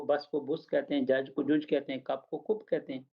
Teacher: जैसे लंदन के नॉर्थ में रहने वाले जो लोग हैं, वो बस को बुस कहते हैं, जज को जुज कहते हैं, कप को कुप कहते हैं।